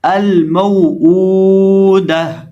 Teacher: تا کو ہائے ساکنہ سے بدل دیں گے